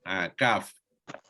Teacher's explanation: Pangkal lidah bersama lelangit berdaging dan lelangit bertulang. Mengangkat.